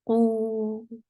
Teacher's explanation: Qaf is heavy, and it is 2 counts long. And make sure you circle your lips very well.